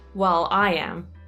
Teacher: Avete notato come ho enfatizzato sulla parola I am